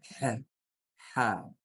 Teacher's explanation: Вот махрадж, то есть место образования буквы Ха, это серединная часть горла, средняя часть горла, как и Айн. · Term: буква Ха